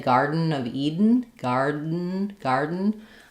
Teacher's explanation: I'm really kind of not releasing those flaps.